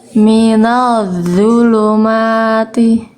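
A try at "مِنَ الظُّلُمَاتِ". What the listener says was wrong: Lebih bagus. Ngalir suaranya dapat, tinggal tebalnya belum. Minal zulumati.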